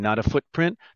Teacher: there's no t this is pausing we don't say a strong t